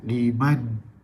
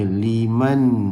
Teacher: nampak tu dia ada tekanan di rongga hidung. Ada sifat dengung